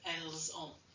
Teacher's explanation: If we're going to use the liaison where we use, we run the S into the verb, to the vowel in front of it.